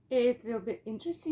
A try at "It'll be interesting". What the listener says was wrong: No, you're going it will. It'll be interesting.